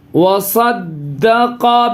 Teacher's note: قاف منہ بھر کے آواز